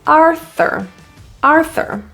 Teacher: In Arthur, that U-R, instead of it being pronounced as ooer, is a quick er.